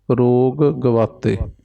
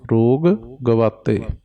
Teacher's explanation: ਰੋਗ ਗਵਾਤੇ ਦੋਵੇਂ ਸ਼ਬਦ ਵੱਖ ਵੱਖ ਪੜਨੇ ਹਨ ਜੀ